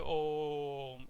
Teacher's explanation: फिर हम मकार का प्रयोग करते हैं, इस ओ को हम 3 बार उच्चारित करते हैं, इस ओ के लिए हम 3 बार उच्चारित करते हैं। अगर 1 सेकंड ह्रस्व में लगता है तो दीर्घ में 2 सेकंड लगेंगे और ओम में 3 सेकंड लगेंगे, ठीक है। तो इसलिए हम लंबा बोलते हैं ओम, इसलिए क्योंकि हमने ये जो ओंकार है यहाँ पर, इसका हमने प्लुत प्रयोग किया, हमने 3 बार प्रयोग किया यहाँ पर, ठीक है।